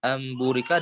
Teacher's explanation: membalikan huruf nun sukun menjadi huruf mim sehingga bisa di idghomkan dengan huruf ba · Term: hukum iqlab